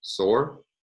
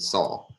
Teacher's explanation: words ending in the same vowel without the rhotic